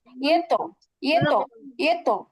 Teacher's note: এই তটা কিন্তু প্রতিধ্বনি হয়ে ডবল শোনা যাচ্ছে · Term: কলকলা